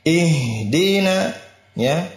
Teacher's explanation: di sini ha memiliki sifat rakhawa, dijalankan.